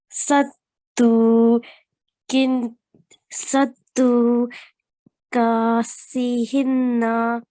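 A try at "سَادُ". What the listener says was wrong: Okay, on this dal, because there is no shadda on dal, so we won't stress on dal. So we would just say sadu.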